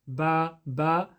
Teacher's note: when you recite the letter ba, it's when the inner lips meet.